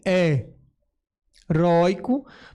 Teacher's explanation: Note que é a segunda sílaba que é mais forte.